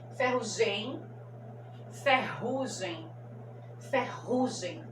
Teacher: então a penúltima sílaba que é a mais forte